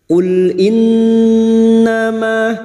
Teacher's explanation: Ma fathah diikuti Alif dua harakat · Nun yang bertasdid gunah musyaddadah kita dengungkan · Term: Mad thii